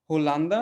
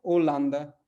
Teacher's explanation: एच जो है छिप जाएगा, एच का उच्चारण नहीं होगा, वो उसके बाद वाले अक्षर से उच्चारण शुरू होगा